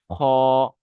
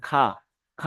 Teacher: খা, খা হবে না, এখানে যেহেতু স্টার আছে, এই স্টার থাকার কারণে এই অক্ষরটাকে আমার পুর করে পড়তে হবে, অর্থাৎ মুখ গোল করে পড়তে হবে